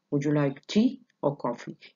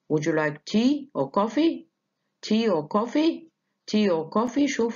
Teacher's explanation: this question ends in a fall and means both items are available and that you have to choose which one